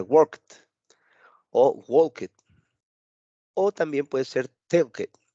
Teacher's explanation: Entonces se oye, por decirlo de esta manera, se oye como un poco más golpeado, ¿verdad? Más intenso el cierre, el final de la pronunciación, porque pronuncio la letra T.